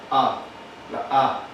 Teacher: la vocal A del español está más hacia el centro de nuestro trapezoide, se pronuncia como en la mitad, A, la A.